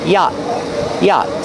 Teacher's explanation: The T is a stop T at the end after the vowel.